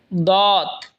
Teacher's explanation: জিহ্বার আগার কিনারা ওপরের মারের দাঁতের গোড়ার সঙ্গে লাগা উচ্চারণ হবে দত